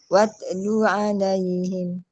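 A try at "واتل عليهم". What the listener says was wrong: Dia kalau kita ada lantunan dekat ta tu, watalu, itu qalqalah. Huruf ta tu jadi qalqalah. Salah. Okey, kena baca watlu. Watlu.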